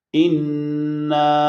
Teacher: اِنَّا میں نون مشدد ہے، نون کے بعد الف، اور مشدد پہ جیسے ہم پہلے کئی دفعہ بتا چکے ہیں کہ لازماً غنہ ہوگا، یہاں پر غنہ لازم ہے، اور الف اس کے بعد حمزہ آیا ہے، چنانچہ یہاں پر مد ہوگی، اور مد کا سائن بھی یہاں پر موجود ہے۔ سو مد کی وجہ سے اس نا کی آواز کو 3 حروف کے برابر لمبا کیا جائے گا۔